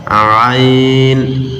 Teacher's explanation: আইন গলার ভিতর থেকে মাঝখান থেকে আইন।